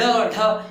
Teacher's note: देखो दोस्तों, उत्क्षिप्त का अर्थ होता है फेंका हुआ, यानी ढ और ढ, यानी जीभ इसमें पूरी मुड़ के एकदम बाहर आती है, इसलिए इसको कहा जाता है उत्क्षिप्त व्यंजन, ढ और ढ।